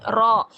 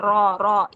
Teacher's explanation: तो र जब मोटी पढ़ी जाएगी तो इसकी साउंड जो है वो मुंह में भर के अदा होगी। कैसे? र आपने इसको हंठ गोल करके र नहीं बनाना। · लेकिन जो चेंजिंग आएगी वह यहां से जुबान की जड़ से चेंज आएगा। यानी जुबान की जड़ जब हम ऊपर तालू की तरफ उठाएंगे तो र जो है ये मोटी पढ़ी जाएगी। ठीक है? तो र जब मोटी पढ़ी जाएगी तो इसकी साउंड जो है वो मुंह में भर के अदा होगी।